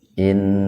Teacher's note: mendengung arti gunna itu dikarenakan nunnya bertasdid, bukan tasjid, tasdid.